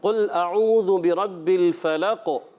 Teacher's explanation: قاف میں قلقلہ ہوتا ہے، آواز لوٹ کر آتی ہے